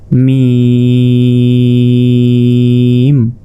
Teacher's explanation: ঠোঁটের ভেজা অংশ থেকে মিম উচ্চারিত হয়,